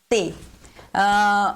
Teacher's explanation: Então, assim, o fonema T, a gente toca a língua nos dentes